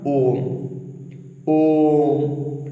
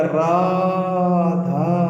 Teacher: जो प्लुत स्वर होते हैं ये किसी के नाम को पुकारने में यूज किया जाता है, इनको काफी लंबा खींच करके बोला जाता है।